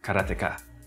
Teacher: In Japanese, there's no stress on any syllable, so it would be Karateka